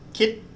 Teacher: when we say kit, it stops in our throat. It's a glottal stop. We can't continue voicing that sound, so it's a dead syllable.